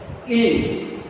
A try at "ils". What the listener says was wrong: No S. See, these 7 are final pronounced consonants. All other consonants will be silent at the end. So pronunciation of singular and plural form is same. Il.